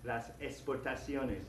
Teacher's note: The letter X, for me personally, I just pronounce it like an S.